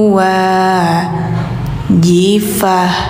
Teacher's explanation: ini suara t menjadi h